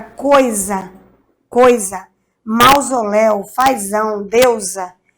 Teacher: Tudo tem som de Z. E tá tudo entre duas vogais, tá vendo? Eu tenho uma vogal aqui e uma vogal aqui.